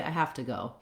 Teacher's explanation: when i use the phrase have to uh native speakers tend to de-voice this and it'll sound more like hafta